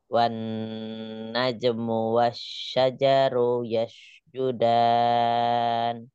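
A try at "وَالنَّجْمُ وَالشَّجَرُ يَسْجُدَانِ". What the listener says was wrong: Ja-nya jangan keseret. wasyajaru. Wasyajaru.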